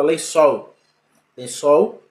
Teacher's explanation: a sílaba tônica é a última consequentemente a classificação é uma oxítona